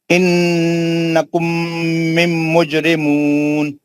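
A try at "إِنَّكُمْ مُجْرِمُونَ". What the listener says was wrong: نہیں دو میم نہیں پڑھنا, میم نہیں ہے. انکم مجرمون.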